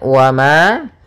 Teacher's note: mim berharakat fathha bertemu dengan alif maka dinamakan dengan mad thaii panjangnya dua harakat